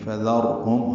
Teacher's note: ہا اقصی حلق سے ادا کریں گے، میم ساکن پہ اظہار شفوی ہے